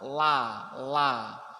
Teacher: kalau tipis niku lidahnya Niki hanya di ujung di atasnya gigi depan La La kalau tebal maka pangkal lidah Niki naik ke atas